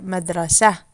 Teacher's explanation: so when we put the lamma on the top and then when there's no vowel on it or we've stopped at the end of the talking it's gonna be an h